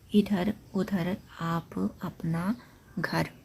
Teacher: निरनुनासिक का जो उच्चारण रहता है ये केवल मुंह से रहता है।